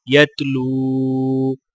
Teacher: واولین کو ایک الف کی مقدار کھینچ کر پڑھا جائے گا